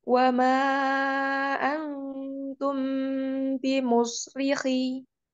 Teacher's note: Tahan, mim sukun ketemu ba-nya. Ikhfa safawi ya, ditahan dulu. Kunah. Wa ma antum bimusrikhi.